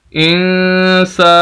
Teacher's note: یہ سین کے آگے الف، یہ الف مدہ ہے، اس وجہ سے سین کو لمبا کریں گے.